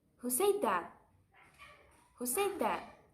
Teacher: that i asked the question i also changed the focus word the second time i am emphasizing who